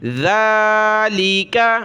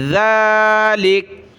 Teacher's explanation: یہ ذال ہے، زبان کی نوک باہر نکالی جاتی ہے، نرمی کے ساتھ ادا کیا جاتا ہے. اس کے اوپر کھڑا زبر ہے تو ایک الف کی مقدار ہم اس کو اوپر کھینچیں گے.